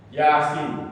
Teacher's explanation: Yaitu huruf ini Pak, ini huruf dibaca wajib panjangnya 6 harokat. Khaffaf ini ringan. Kenapa ringan? Tidak terjadi dengungan. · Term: mukhaffaf